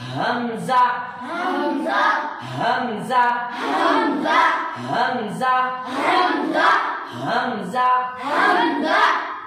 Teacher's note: इसका मखरज ये है कि हलक का आखिरी हिस्सा, हलक का आखिरी हिस्सा और सीने का शुरू वाला हिस्सा